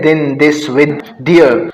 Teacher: Sound produce विद द tongue against द upper front teeth. कहते हैं कि जो साउंड्स जुबान और ऊपर वाले दांतों का जो फ्रंट वाला हिस्सा है उनके साथ मिलकर जो साउंड प्रोड्यूस होते हैं उनको डेंटल कहते हैं।